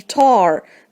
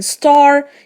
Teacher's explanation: If you put the back of your hand in front of your mouth as you say tar, then star, you should be able to feel some physical evidence of aspiration, the puff of air accompanying the t sound at the beginning of tar, but not in star.